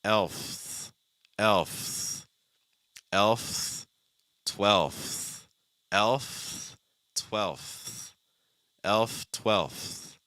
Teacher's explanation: Now we have a dark L sound followed by an F that is then followed by a TH.